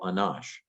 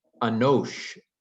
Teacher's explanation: Hebrew's done the Canaanite shift, and the long A has become a long O.